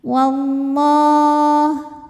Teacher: Lam jalalah dibunyikan secara tafkhim karena huruf sebelumnya berbaris fathah, maka dibacanya tebal. Wallah. Kemudian alif lamnya dinamakan dengan alif lam syamsiyah karena alif lam menghadapi huruf syamsiyah yaitu lam, maka alif lam tidak dibaca.